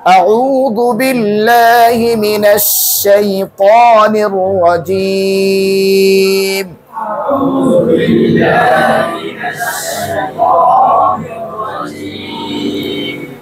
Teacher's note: এই দেখেন আ উ, এখানে দুটি হরফ, একটা হামজা আর একটা আইন, এবং দুইটি হরফের মাখরাজ দুই জায়গায়। একটা হচ্ছে হলকের শুরু থেকে আর একটা হচ্ছে হলকের মধ্যখান থেকে।